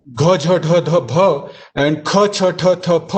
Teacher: We know that Mahapranas are not there. The aspirations are not there in Persian.